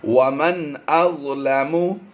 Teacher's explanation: نون ساکن کے بعد حمزہ حروف حلقی میں سے ہے تو یہاں پر ہم نے اظہار کرنا ہے، غنہ نہیں کرنا